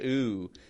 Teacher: that full ooh, sort of, W glide sound